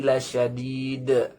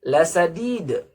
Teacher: kesalahan membaca shin menjadi huruf sin